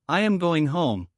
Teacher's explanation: When I finish a statement, my voice goes down. I practice saying I am going home with a strong falling sound at the end.